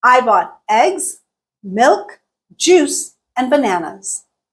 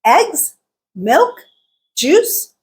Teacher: eggs milk juice all three went up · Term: rise fall intonation pattern